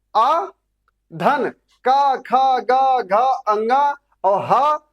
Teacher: इन सबका उच्चारण स्थान क्या है साथियों? इनका सारे लोगों का कंठ है।